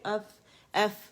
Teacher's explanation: جو سامنے کے جو 2 دانت ہیں ثناء علیہ انہیں کہا جاتا ہے، وہاں لگے گی ہلکی سی، تو ایف ادا ہوگا، ایف ادا ہوگا، ہوا فیل کریں، ایف ایف، ٹھیک ہے، فیل ہوگی.